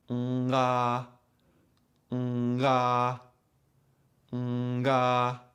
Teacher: If you do it too quickly, you will hear the tongue and soft palate moving away from each other, causing a little click, pop, or abrupt transition. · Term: popping sound